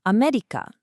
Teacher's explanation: starts low and then just keeps going up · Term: pitch accent